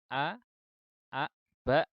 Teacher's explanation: untuk hamzah ini punya sifat jahar sehingga tidak boleh keluar udara atau aliran udaranya terhambat